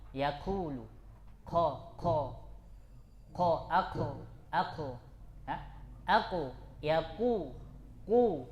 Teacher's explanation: huruf qf jangan sampai keluar nafasnya jangan keluar anginnya